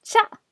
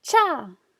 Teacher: it's because it shares a consonant chip sound but this time instead of being non aspirated its aspirated so it's longer